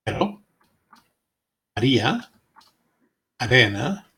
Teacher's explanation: The intervocalic embedded, not at the beginning of a word, of R involves a single tap of the tongue against the alveolar ridge. The result is a sound much like the DD in the name Eddie.